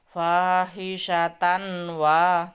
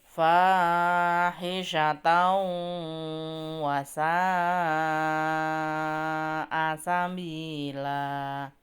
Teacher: fathah tanwin ketemu dengan wawu yaitu hukum bacaannya idgham bi gunnah. Maka bacanya fahisyatan mendengung masuk dengan mendengung. Tidak fahisyatan wa tidak seperti itu gitu ya.